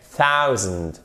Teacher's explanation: avec un accent tonique exactement comme 100 sur la première syllabe.